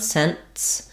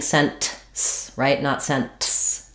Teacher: So technically no, cents has a stopped t sound, cents, where it's going to have the se, n. We're not going to really hear that T, but we're going to hear that the air stops. So when I'm saying cents, I don't hear the T.